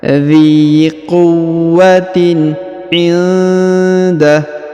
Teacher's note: Kemudian nun sukun bertemu dengan huruf da, maka didengungkan dan disamarkan.